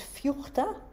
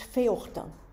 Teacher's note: a short vowel becomes a diphthong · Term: vowel breaking